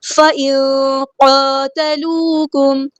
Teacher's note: نون ساکن کی آواز کو ہم یہاں پہ چھپا دیں گے